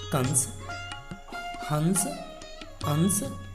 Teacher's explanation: अनुस्वार इस ध्वनि का उच्चारण म या न के समान होता है।